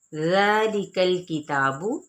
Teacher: ذا پہ مد اصلی بالالف کا قائم مقام ہے جس کو کھڑا زبر کہتے ہیں، 1 الف یا 2 حرکات کے برابر کھینچا جائے گا